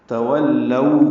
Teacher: سے ادا کریں گے اور دو حرکات لمبا کریں گے، تولو لو وولین ہے، ہونٹوں کو تمام گول کریں گے، آگے لائیں گے